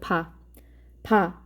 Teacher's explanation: 입술 소리는 양순음이라고 되어 있죠. 양쪽 입술을 닿았다가 떨어져서 나는 소리가 입술 소리인데요.